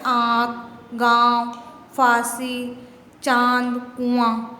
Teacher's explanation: नाक से भी हवा निकल रही है, मुंह से भी निकल रही है ये, तो क्या हो गया, ये अनुनासिक हो गया।